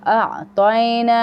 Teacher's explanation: تئی نہیں پڑھیں گے, پتلا نہیں کریں گے, موٹا کریں گے کیونکہ تا ہے یہاں پہ تا.